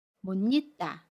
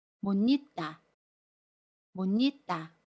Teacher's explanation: 받침 시옷은 받침 소리 니은으로 발음하고요. 모음 이는 니로 발음합니다.